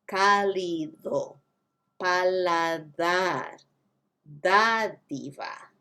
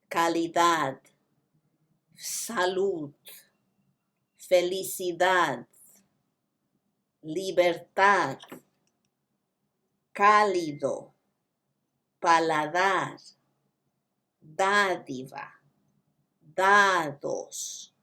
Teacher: The D sound is different. It's a really, really, really soft TH. It's not th, it's just the hint of th. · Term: soft TH sound